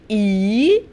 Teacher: you would notice that the lips are not rounded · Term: unrounded